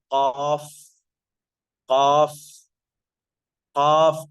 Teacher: زبان کی جڑ تالو میں ٹچ ہو رہی ہے، جبکہ زبان کے بیچ کا اور زبان کے سامنے کا حصہ الگ رہ رہا ہے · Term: انفتاح